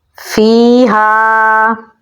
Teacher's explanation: فا کو ہم یا کے ساتھ ملائیں گے اور ایک الف کے برابر لمبا پڑھیں گے کیونکہ یا حروف مدہ میں سے ہے. ہا کو ہم گلے کے نچلے حصے سے نکالیں گے. آگے الف مدہ ہے تو اسے لمبا بھی پڑھیں گے تو پڑھا جائے گا فیہا.